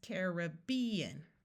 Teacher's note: in the second pronunciation we have a clear long a sound and the third syllable is accented